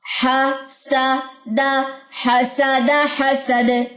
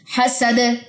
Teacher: آواز کے اندر ایک باؤنس بیک آپ کو فیل ہوا ہوگا، ایک وائبریشن سی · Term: کلکلا